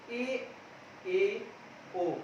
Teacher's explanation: हमारे दांत जो है थोड़े दूर दूर हो गए हैं, समृद्ध की तुलना में थोड़े दूर हो गए तथा मुख थोड़ा समृद्ध की तुलना में खुल गया, अधिक खुल गया है और जीवा की जो ऊपरी जो ऊंचाई थी वह थोड़ी कम हो गई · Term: अर्ध समृद्ध स्वर